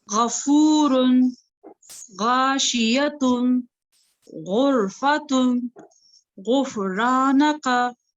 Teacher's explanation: जुबान के पिछले हिस्से को ऊपर की तरफ बुलंद करते हुए मोटी आवाज से हम इसको अदा करेंगे